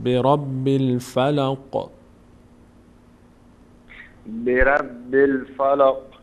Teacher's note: مقداری قاف وقتی تلفظ می‌کنین در مخرج قلقله داره می‌لرزه